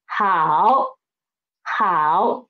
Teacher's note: The initial he, the final ao, and the tone is third tone. So it is he, ao, hao.